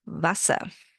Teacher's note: The W sounds like a V and the E R becomes a H at the end